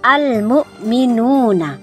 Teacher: Yang pertama adalah idhar qamariyah. Idhar artinya jelas. Jadi alnya terbaca jelas.